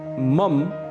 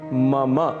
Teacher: मम अंत में अ की ध्वनि अवश्य आनी चाहिए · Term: शुद्ध उच्चारण